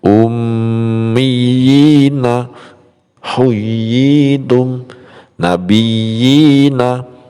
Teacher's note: Yang dinamakan mad tamkin ialah ya kasroh bertasdid yang bertemu ya sukun, panjangnya 1 alif